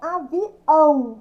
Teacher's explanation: Quando eu falo avião, o ão aqui, ó, é um som nasal, o tio no A.